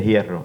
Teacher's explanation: Y el último rasgo que hemos visto era la aspiración de H, de la letra H, pero que son en realidad de palabras que proceden de la F del latín